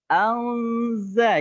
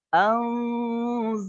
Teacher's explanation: Nun sukun bertemu dengan zai, disamarkan, tidak dibaca jelas ya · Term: Ikhfa